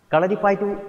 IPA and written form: kɐɭɐripɐjɐtːɨ̆ (Kalaripayattu)